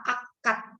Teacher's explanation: Oh itu huruf D, tapi terbaca fonetis dengan huruf T.